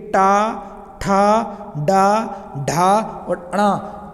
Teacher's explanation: आपकी जीभ कहाँ लग रही है? मूर्धा से लग रही है।